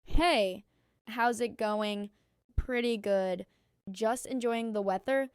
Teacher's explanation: Notice the linking in how's it and enjoying the. You barely stop between the words. That's what makes it sound smooth.